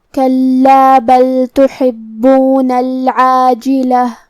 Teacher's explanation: با پہ تشدید ہے، لہذا دو حرف کے برابر ہمیں حرف البا کو پڑھنا ہے